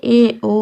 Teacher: अर्ध संवृत यानी आधा बंद जिसमें ए ओ आते हैं।